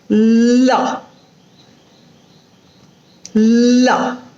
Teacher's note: In lateral sound, at some point, there is a closure in the middle, but the air escapes through the sides.